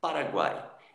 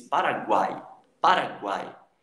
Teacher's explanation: o U e o I têm sons fracos, porque são semivogais. Só o A tem um destaque quando você diz Paraguai. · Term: tritongo